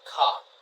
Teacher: for non-rhotic accent, we would say car. We don't say the R. We say car.